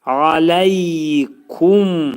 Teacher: Ağız yumulacaq və şəfəvi hərfdir, dodaq hərfidir.